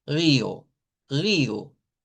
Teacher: lo típico es convertir esa o en una u larga